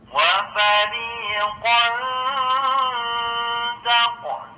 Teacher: Tanwin bertemu huruf ta, hukumnya ikhfa, yaitu menyamarkan bunyi tanwin ke huruf ta disertai dengung seukuran dua harokat